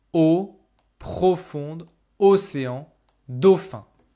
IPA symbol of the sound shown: o